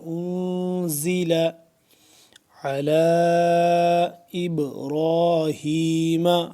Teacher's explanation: عین کو حلق کے درمیانی حصے سے کھنچاؤ پیدا کر کے ادا ہوگا